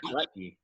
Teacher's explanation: So that's another example of a glottal stop.